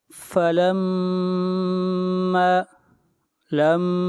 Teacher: میم کے اوپر شد ہے، غنہ ہوگا، میم کو کھینچ کر پڑھیں گے 1 الف کے برابر